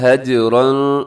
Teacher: یہاں را کے اوپر حرکت ہے تو را موٹی ہوگی اور اس کے اندر اخفا بھی ہوگا.